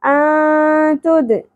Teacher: حروف اخفاء میں سے تا اگیا اخفاء ما الغنہ ہوگا انتد تا باریغ ہوگا دال ساکن پہ قلقلہ ہوگا